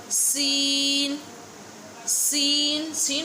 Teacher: Seen pronounced from the tip of the tongue touching the inner edge of the top two and bottom two front teeth. इसमें भी ऊपर वाले दांत और नीचे वाले दांतों को जबान लगेगी, ठीक है। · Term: whistle sound